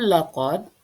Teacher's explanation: dibaca dengan memantulkan atau Qalqalah